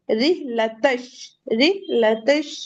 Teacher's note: ता को डायरेक्ट श से मिला देंगे